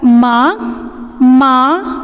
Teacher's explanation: लगाते हैं सब बनाते हैं तो उसके ऊपर चंद्रबिंदु हो तो उसका उच्चारण करते समय जो हवा होती हैं नाक और मुंह दोनों से बाहर पड़ती है · ठीक है, अब इसका उच्चारण करते समय हमने क्या कहा कि नाक और मुंह दोनों से हवा निकलती है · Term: अनुनासिक